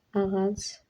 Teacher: Ağac vurğu sona düşür bu sözdə.